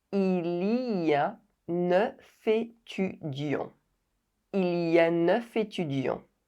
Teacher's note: the consonant f is not silent and it is pronounced f.